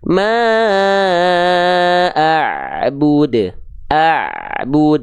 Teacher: Ain sedikit mengalir Berarti enggak boleh betul-betul ngalir tapi enggak boleh juga putus maka dijelaskan tadi jangan sampai Ain ketika dilafazkan dalam kondisi sukun · pastikan suara Ain sukun itu ketika sukun harus sedikit mengalir enggak boleh betul-betul terputus